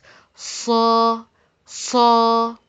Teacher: Let me tell you something that the articulation point of Sod is the same as zay. It's articulated from the tip of the tongue between the plates of the two top incisor and slightly above the lower incisor. So, you found that the tip of your tongue is touching the lower incisor in your mouth.